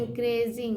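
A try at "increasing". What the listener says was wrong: क्री, इनक्रीजिंग, सिंग, ए सिंग नहीं, क्री, ई ए को ई बोलते हैं, ई ए को क्या बोलते हैं? बड़ी ई, तो सी आर ई होगा क्री, तो इन क्री, और एस को बोलेंगे यहाँ ज, तो और इसमें आई नहीं जुड़ा हुआ है, तो इंक्रीजिंग।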